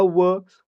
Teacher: व चा उच्चार करताना आपले ओठ तरी हलतात परंतु त्यासोबतच आपली जीभ आहे ते आपल्या दातांना स्पर्श करते म्हणजे काय झालं हा दंत आणि औष्ठ दोन्ही आहे म्हणजेच दंतोष्ठ